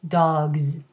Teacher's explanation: in dog the plural sounds like a voiced z